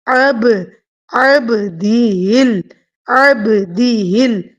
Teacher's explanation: آئین کی آواز وسط حلق سے اور با ساکن کے اوپر قلقلہ